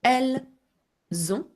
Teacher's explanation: notice that I do the Z sound because elle ends with an S and begins, and on begins with a vowel.